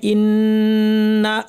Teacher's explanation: ইন্না মা পরের এখানে ইন্না দেখেন আমি থেমে গেলাম। নাতে থেমে গেলাম। কোন আলিফ বা টান এখানে আমি দিচ্ছি না।